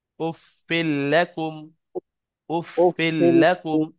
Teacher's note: এখানে উফিন ছিল, ফা দুধের ফিন, সেই নুনটা উচ্চারণ হবে না, সেই নুনের জায়গায় লাম উচ্চারণ হচ্ছে তারপরে লাম আসার কারণে।